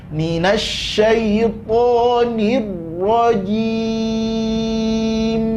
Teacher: Mim ada sifat tawasud di situ. Jadi jangan langsung dipotong mimnya